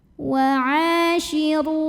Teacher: ain yang berbaris fathah kita panjangkan 2 harokat saja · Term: mad tabi'i